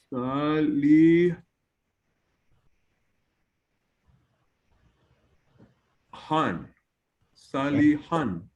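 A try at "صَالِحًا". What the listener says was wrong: Very good.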